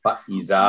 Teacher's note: زال کے آگے حروف مدہ ہے الف، تو یہ ہوگا 2 سیکنڈ میں